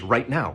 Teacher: You think there's a T in it, but there's not. It's a glottal stop. Nobody says right now.